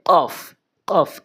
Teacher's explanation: কফ জিব্বার গোড়া থেকে উচ্চারণ হয় কফটি